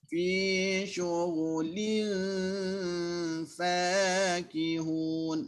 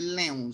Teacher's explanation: Kekalkan bunyi li tu. Sebab yang kita nak dengung tu nun. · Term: nun yang ikhfa